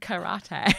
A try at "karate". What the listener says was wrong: You've broken those syllables up too harshly. Just karate, babe.